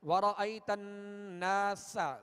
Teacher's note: سین کو سختی کے ساتھ اور باریک پڑھیں گے